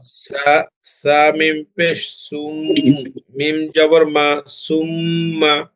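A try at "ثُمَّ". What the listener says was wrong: জি মাশাল্লাহ, সাটা একটু নরম হবে।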